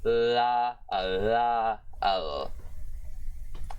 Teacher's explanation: So now we have another example of dental specification, creating the voiced dental or dentalveolar lateral proximant consonant, which is la, la, l.